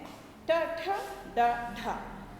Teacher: और तीसरा है मूर्धन्य, मूर्धन्य वर्ण है ट ठ ड ढ, ये 4 मूर्धन्य वर्ण है। मूर्धा पर जीभ लगाने से बोले जाते हैं।